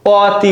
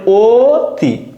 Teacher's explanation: দেখো এখানে এই অ দেখো আমরা যখন উচ্চারণ করি আমরা কিন্তু অতি বলি না, আমরা বলি ও তি।